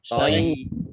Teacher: Nun sukun bertemu dengan huruf to, bacaan ikhfa dibaca samar-samar. Yaknya ada tasdidnya dibaca double toyi ya. Toyi. Kemudian ba fathah alif mat tabi'i panjang 2 harokat, mim fathah alif mat tabi'i panjang 2 harokat.